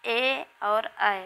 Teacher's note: ए और ऐ कंठ तालु से बोले जाते हैं